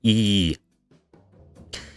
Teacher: E in Italian is very much front and very high. So E.